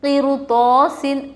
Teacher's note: رائے ساکنہ کے بعد حروف مستعلیہ میں سے تو آ رہا ہے، رائے ساکنہ کو موٹا پڑھیں گے۔ الف سے پہلے تو کے اوپر زبر حروف مدہ تھوڑا کھینچ کر پڑھے، سین کے نیچے تنوین، دو زیر دو زبر دو پیش کو تنوین کہتے ہیں، ٹھیک ہے۔